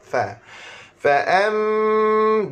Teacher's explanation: makhraj huruf pada bibir, gigi atas sentuh pada bibir bawah. Fa. Fa'am, dengar baik cukup, mim syaddah.